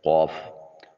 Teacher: کو ہونٹوں کو گول کر کے ادا کرتے ہیں قوف، حلق کے کوے کے ساتھ جب زبان کی جڑ لگے تو قوف ادا ہوتا ہے۔